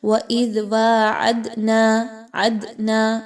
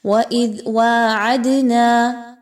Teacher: وَإِذْ وَاعَدْنَا، دال کے اوپر جزم کی علامت ہے، دال کو قلقلہ کرتے ہوئے پڑھیں گے، یعنی دال کی آواز کو تھوڑا سا ہلا کر پڑھنا ہے